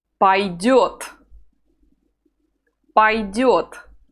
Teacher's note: The second vowel, the yo, is always stressed, so the letter o is not stressed, and we pronounce it a.